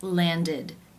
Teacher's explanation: the ending is pronounced with the e as in sit vowel and the D sound